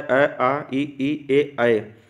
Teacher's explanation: तो अवृत्तमुखी ऐसे स्वर जिनका उच्चारण करते समय ओष्ठ का आकार गोल न होकर ऊपर नीचे फैल जाता है, उससे अवृत्ताकार स्वर उत्पन्न होता है।